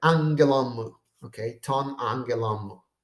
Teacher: the accent that mu should take actually is moved to the last syllable of the previous word. And so the two are put together, the angelon and mu are basically combined together in one single word with two accents, right? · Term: enclitic accent